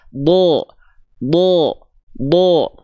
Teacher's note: huruf dd huruf DD itu termasuk ke dalam huruf yang tebal ketika dia berharakat fathah dia tidak dibaca dengan vokal A tapi condong pada vokal o